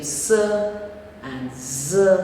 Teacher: voiceless and voiced alveolar fricative s and z, both of them are sibilants